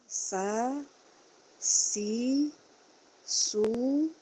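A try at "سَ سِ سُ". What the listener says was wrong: Jangan langsung monyong. Jangan su. Jangan sa, si, su. Sa, si, su. Jangan. Sa, si, su.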